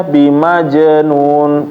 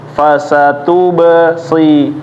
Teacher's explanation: Kemudian yang harus diperhatikan juga tadi adalah ketika ba dan ya, ketika ba ini dalam keadaan mati ya, dia dibaca qalqalah